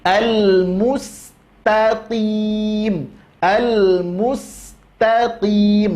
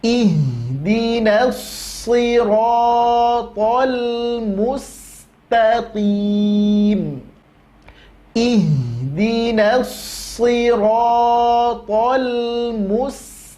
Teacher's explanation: belajar huruf qaf, makhrajnya letakkan ya, pangkal lidah.